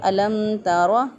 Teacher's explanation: تو یہاں پر ہم کیا کریں گے، اظہار شفوی کریں گے، میم ساکن کی آواز کو ظاہر کر کے پڑھیں گے